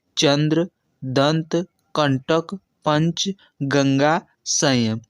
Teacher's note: अनुस्वार का जब जिस भी वर्ड में अनुस्वार लगा रहता है, जब हम उसका उच्चारण करते हैं तो नाक से अधिक वायु निकलती है और मुख से कम वायु निकलती है